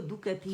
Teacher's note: ती इसे लंबा नहीं करना, सिर्फ 1 काउंट के लिए आवाज़ नीचे जाएगी